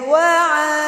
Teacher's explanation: ainnya berharokat fathah bertemu dengan alif, juga mad tabi'i, disebut juga mad asli, panjangnya 2 harokat